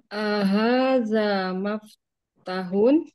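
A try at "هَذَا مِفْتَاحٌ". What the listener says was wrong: kasrah umi miftah. hak ya, bukan hak, tapi hun. Hak tengah tenggorokan, miftahun.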